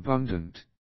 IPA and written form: ə'bʌndənt (abundant)